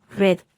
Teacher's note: se pronuncia haciendo vibrar la punta de la lengua contra el alvéolo